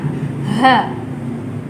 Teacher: huruf H sendiri keluarnya dari pangkal tenggorokan